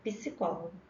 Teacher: acrescenta na oralidade um fonema vocálico em meio a consoantes